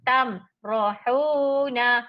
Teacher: dekat ra tu tak ada mad asli, tak ada tanda panjang Okey, jadi kita baca pendek.